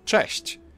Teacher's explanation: Polish ch is a bit harsher than its English counterpart, but there's also a comparable softer sound